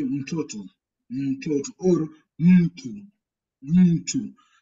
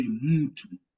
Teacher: You don't combine the consonant M and the following consonant.